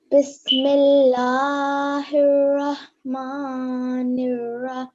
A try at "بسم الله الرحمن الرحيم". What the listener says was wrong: Okay, we will explain as we go along, but when you read here, okay, this lam, try and make it a little bit thinner. Smile as you say. Millah. La.